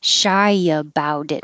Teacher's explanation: will all connect the t changing to a d